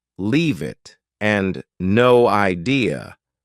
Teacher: leave it and no idea both sound like they have no spaces between the words.